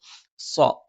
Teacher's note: മേലെ ചുണ്ട് അല്പം പുറത്തേക്ക് താഴെ ചുണ്ട് അല്പം ഉള്ളിലേക്കും കയറി നിൽക്കുന്നു സ്വ നാവിന്റെ കൂർത്ത അറ്റത്തിന് മുകൾഭാഗം രണ്ടു വരി മുൻപല്ലുകൾക്കിടയിൽ പിന്നിലായിട്ട് നാവിന്റെ മധ്യഭാഗം മുകളിലേക്ക് ഉയരുകയും ചെയ്യുന്നു